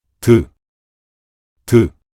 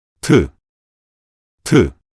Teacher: the initial sound of digut, representing a basic sound, and the initial sound of tiut, representing an aspirated sound